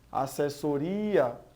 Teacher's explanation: aqui a gente vê que há também a tonicidade na penúltima sílaba